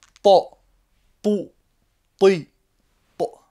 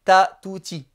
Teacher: Donc le T qui se prononce de façon emphatique. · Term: le T emphatique